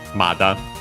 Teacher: So with a negative verb. Accent on the first mora